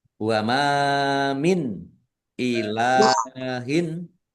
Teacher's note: Wama min ilahin mim alif mad thobi'i panjang dua harakat.